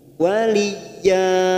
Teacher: ya-nya fathah tanwin, fathatain yang dibaca waqaf, namanya bacaan mad iwad, 2 harokat kita panjangkan